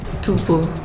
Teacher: Because the Korean language has no voiceless labial dental fricative, it is replaced with b, the voice bilabial plosive.